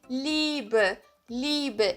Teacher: Eu não falo o I e o E, eu prolongo o som do I.